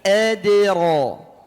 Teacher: Tebalkan ra-nya. Bareng-bareng adira. Adira. Bukan adu. Jangan sampai a-nya ikut tebal.